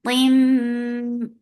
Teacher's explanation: Qim, this is idgham. This idgham is with gunna, so keep the sound in your nose for a longer time because this is akmal gunna.